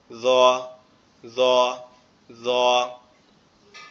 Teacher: অক্ষরটা আবার আমাদের জিহ্বার আগা সামনের উপরের দুই দাঁতের আগার সঙ্গে লাগবে, লেগে উচ্চারিত হবে জ, জ, জ।